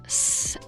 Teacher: With the s sound, you probably won't feel nearly as much, if any, vibration in your neck, and that means it's voiceless.